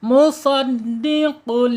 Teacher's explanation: penekanan di huruf dal ya karena dia bertasyid